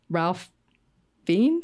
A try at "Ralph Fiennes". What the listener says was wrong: Rafe Fiennes. Yeah, Rafe. It's also Rafe. It's not Ralph.